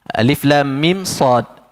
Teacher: mim bertemu dengan sad izhar syafawi. Jadi tidak berlaku idgham, tidak boleh dengung di situ. Okey. Dan yang keempat, sad adalah huruf mad lazim harfi mukhaffaf.